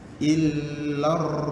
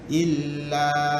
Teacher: Artinya dia walaupun ada alif panjang, dia kena masuk juga ke dalam ra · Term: alif lam samsiah